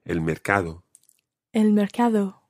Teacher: make sure it's a soft D sound in the middle